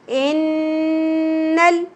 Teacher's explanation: नून मुशद्दद आएगा यहां पर तो गुना होगा नाक में आवाज को ठहराना है